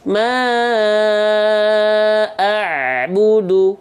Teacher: abudu kerasa ya Nah jangan sampai abudu nah gitu ya jadi ain dalam kondisi sukun tidak boleh putus suaranya karena dia punya sifat yang disebut dengan tawasud artinya dia harus tetap mengalir sedikit suaranya